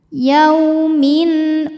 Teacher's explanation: yaumin Min ada izhar halqi karena tanwin kasrah menghadapi Hamzah maka tanwin dibaca dengan jelas n tidak ditahan